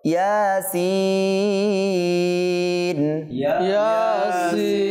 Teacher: প্রথমটা এক আলিফ টানবো, দ্বিতীয়টা আরো বেশি টানবো